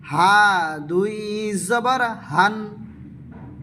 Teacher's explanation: সিনাহ থেকে আদায় করবে কোথাও বাজবে না তার মানে সিনা হইতে সোজা আওয়াজটি আসবে